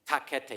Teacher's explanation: every time you say a T or a K, you actually stop, your tongue stops the sound from coming out, your air pressure builds up behind the tongue, you drop your tongue, and the air spikes out.